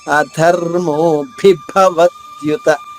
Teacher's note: భి భ రెండు మహాప్రాణాలు వరుసగా ఉన్నాయి గుర్తించండి అధర్మో భిభవత్యుత రెండు నొక్కి చెప్పాలి భవత్యుత వ పైన ఆగా తీసుకుంటూ త్యులోని